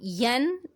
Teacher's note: ین یہ اظہار ہے، یہاں پہ ہم نے اظہار کا قاعدہ کیا ہے کیونکہ آگے ہا آ رہا ہے جو کہ حروف حلقی میں سے ہے، اور نون ساکن کے بعد جب کوئی حروف حلقی میں سے کوئی حرف آتا ہے تو وہاں پر ہم اظہار کرتے ہیں، نون کی آواز کو ظاہر کر کے پڑھتے ہیں